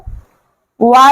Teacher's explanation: वा का उच्चारण स्थान क्या है? दंतोष्ठ।